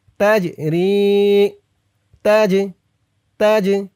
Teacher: এই জিমটা কলকলের হরফ ধাক্কা দিয়ে পড়তে হবে